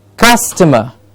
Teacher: Cus gets the stress.